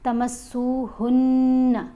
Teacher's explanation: آواز ناک میں پڑھی جائے گی اور ایک الف کے برابر ٹھہر کر اس کو پڑھا جائے گا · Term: غنہ